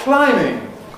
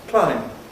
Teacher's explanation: this word locally is pronounced [klaɪmb] purely on the basis of the spelling